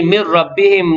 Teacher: nun mati bertemu dengan ra, idgham bila gunnah, memasukkan tanpa dengung.